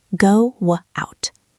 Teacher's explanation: This happens when the first word ends in a round lip sound like o or u. Your lips are already in the shape of a w. So the w sound comes out naturally. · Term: W bridge